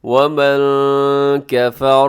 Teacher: یہاں نون ساکن کے بعد کاف ہے تو یہاں اخفا کیجیے گا، آواز کو ناک میں لے جائیے گا۔ ومن کفر، اور کفر میں را کے اوپر زبر ہے، اسے آپ موٹا پڑھیں گے۔